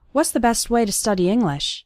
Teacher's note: the T at the end of best also kind of disappears